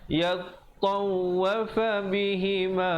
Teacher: ta dengan waw bersabdu, jadi tekankan di atas kedua-duanya